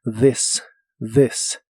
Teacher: la th de esta palabra se pronuncia como una d vibrante